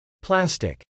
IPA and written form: plˈæstɪk (plastic)